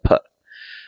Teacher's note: the voiceless bilabial stop, which is the p